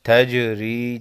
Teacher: جیم ساکن کو ہلا کر پڑھیں گے